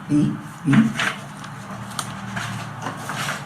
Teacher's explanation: When I say V, you notice my lip goes into my teeth, or my teeth go over my lip. V, V. Like in Spanish, right?